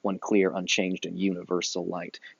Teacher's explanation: the first syllable is unstressed and the second one is stressed and repeats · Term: rhythmical structure